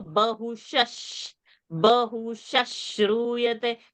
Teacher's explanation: Now when a shra comes, shra is a sh and a r. So the visarga before a sh will become sh.